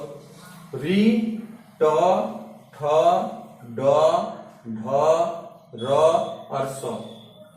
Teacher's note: तो री ट ठ ड ढ र और स, ये हमारे मूर्धा से निकलते हैं, इनका सभी का उच्चारण स्थान मूर्धा है।